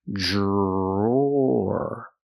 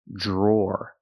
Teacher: The dr makes the j sound like juice and jump, plus the r